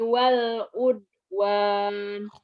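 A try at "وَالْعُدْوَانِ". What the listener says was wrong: Wal ud qalqalah aja keluarin. Wal udwan. Wala ta'awanu 'alal ismi wal 'udwan.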